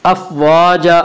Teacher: الف مدہ کو ایک الف کے برابر کھینچ کر پڑھتے ہیں۔ افواجا آگے آیت ہے وقف کریں گے، دو زبر پر وقف کرنا ہو تو ایک زبر کے ساتھ الف پڑھا جاتا ہے۔